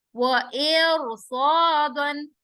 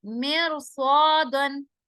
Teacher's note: جب را ساکن کے بعد حروف مستعلیہ آ رہا ہے تو اس کی وجہ سے یہ را کیا ہوگا, موٹا ہو جائے گا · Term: را موٹا ہو جائے گا